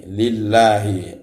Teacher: Ada lafaz Allah didahului oleh harakat kasroh, maka lillahi itu dibaca tarkib tipis. Allahnya dibaca tipis karena didahului oleh harakat kasroh